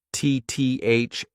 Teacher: Get your tongue in between your teeth, and this is a voiced TH